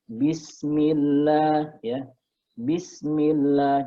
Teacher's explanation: kalau didahului oleh huruf berharokat kasroh, dia dibaca tipis atau tarqiq ya